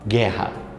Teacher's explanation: perceba que o u Ele não é pronunciado não há pronúncia do U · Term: dígrafo